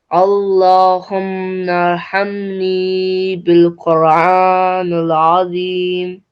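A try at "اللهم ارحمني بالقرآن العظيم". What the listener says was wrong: This is nil. Yeah, noon has a kasra. So we're saying nil azim.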